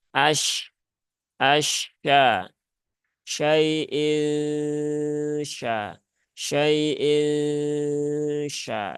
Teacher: itu lidah kita sudah mendekati ya bersiap-siap untuk mengucapkan huruf syin huruf syin ada di mana Di tengah lidah langit langit atas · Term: huruf shin